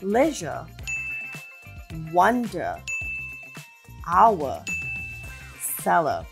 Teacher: They're all spelled differently, but they all contain the schwa sound.